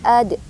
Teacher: Ad itu qalqalah sughra ya. Jadi memantul dia.